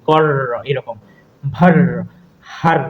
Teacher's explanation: আমরা যদি বলি কর, এরকম ভার, হার, সেই জন্য এই যে কম্পন সৃষ্টি হচ্ছে, দন্তমূলকে আমাদের জিভটা একাধিকবার স্পর্শ করতেছে, সেই জন্য আমাদের কম্পিত ব্যঞ্জনের উদাহরণ হচ্ছে র।